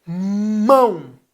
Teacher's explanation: mão é um ditongo nasal a mão é um ditongo nasal sim porque você usa o